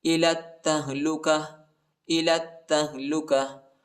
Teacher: ता पर शद आया है, ता को शिद्दत के साथ सख्ती के साथ पढ़ेंगे और ता को हा के साथ मिलाएंगे, हा साकिना है। वक़फ़ की सूरत में ता को हा पर तब्दील करेंगे